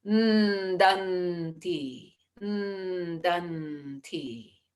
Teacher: we can sort of rest the tongue at the teeth for the danti